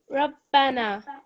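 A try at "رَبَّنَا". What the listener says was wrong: Slightly more thick. Rabbana.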